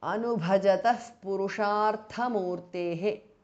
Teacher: Tathanubhajataha because of Sandhi. Visarga changes to Upadhmaniya.